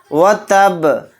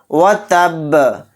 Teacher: با کو ساکن بنا کر پڑھیں گے، اور با ساکن ہوگا تو اس کے اندر قلقلہ بھی کریں گے